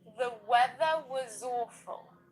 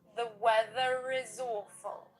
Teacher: I do usually pronounce the letter R when it comes before a vowel sound.